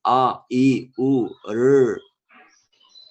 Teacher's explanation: the point is is that when we pronounce varus or vowels there is no contact of the tongue with any practically any place of pronunciation in the mouth